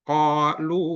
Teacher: Qalu dibaca 2 harakat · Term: mat tabi'i